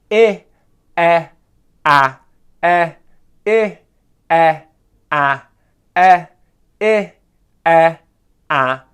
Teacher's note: The next exercise is going between 3 front vowel sounds, the sounds I, E, A. And what we're going to do is start at the top, work our way down, and then work our way back up with the different vowel sounds.